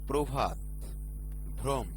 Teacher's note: শব্দের শুরুতে অ যদি রফলা যুক্ত থাকে তবে সেই আদ্য অ এর উচ্চারণ ওকার হয়। যেমন প্রভাত, ভ্রম।